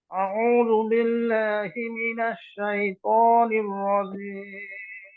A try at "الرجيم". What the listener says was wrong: জিমটা আর শক্ত করেন রজিম রজিম